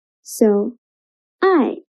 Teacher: I is the final and it is the fourth tone.